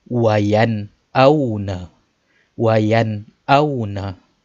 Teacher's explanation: membaca nun mati atau tanwin dengan terang dan jelas. Terang dan jelas tanpa dengung. Maksudnya tak payah duk panjang, tak payah duk dengung. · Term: izhar halqi